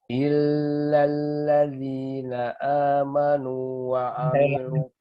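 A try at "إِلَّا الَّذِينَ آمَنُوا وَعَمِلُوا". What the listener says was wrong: Lamnya nggak usah terlama. Illalladzi. Lam bukan huruf gunnah. Illalladzi, jangan illalladzi, bukan. Illalladzi.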